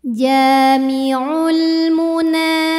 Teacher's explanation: Kemudian ada hukum alif lam yang dinamakan dengan alif lam qamariyah. Karena alif lam menghadapi huruf qamariyah yaitu mim, maka lam sukun dibaca jelas.